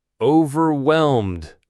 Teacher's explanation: that final D is very soft, almost like it blends into the M before it.